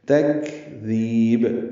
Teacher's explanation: فی یا مد ہے، بھی 2 حرکات لمبا کریں گے. تکذیب کاف ساکن ہے، اس پہ ہمس ہوگا، یعنی سانس جاری رہے گی اس پہ پڑھتے ہوئے. ذال نرمی سے پڑھیں گے لیکن لمبا کریں گے، اور با ساکن پہ قلقلہ کریں گے، یہ وقفن ہے.